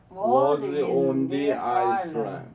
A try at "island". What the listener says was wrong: 아이슬란드가 아닙니다. 아일랜드예요. S를 발음 안 합니다.